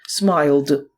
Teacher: після глухих приголосних крім літери Т наприклад watcht закінчення і діємо вимовляється як д після дзвінких приголосних та голосних